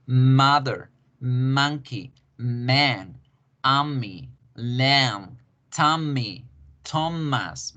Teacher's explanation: A diferencia del español, donde yo no hago la vibración tan notoria, digo mamá, Mico, mono, Martínez. En inglés debo generar una vibración un poquito larguita antes de soltar la M. · La M es nasal bilabial, porque yo debo cerrar los labios para que el aire fluya a través de la nariz y de esta forma yo hago el sonido.